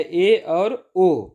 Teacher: अर्ध समवृत्त स्वर के उच्चारण में मुख द्वार कम सकरा होता है, मतलब ये कम बंद होता है, ज़्यादा खुला नहीं रहता ना ही बंद रहता है।